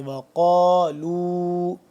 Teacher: قاف علی زبر قا تھوڑا سا لمبا اور قاف کو موٹا کر کے